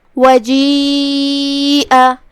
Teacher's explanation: یہاں مد یا ہے اور یہ مد واجب متصل ہے، تو ہم اپنی آواز 4 مد کے برابر لمبی کریں گے